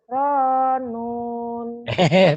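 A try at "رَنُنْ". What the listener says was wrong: Payah sekali. Ronun, jangan panjang. Gitu. Kan nonnya kosar, nonnya pendek. Ronun, gitu aja.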